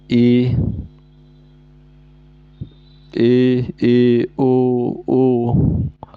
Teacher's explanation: इन स्वरों के उच्चारण मुंह से लगभग बंद हो ही रहता है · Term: संवृत